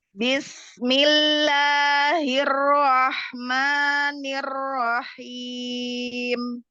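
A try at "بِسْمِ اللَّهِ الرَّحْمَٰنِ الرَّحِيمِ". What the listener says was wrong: Bibir bawahnya masih masih minta tolong sama bibir bawah jadi Bibir bawahnya enggak aktif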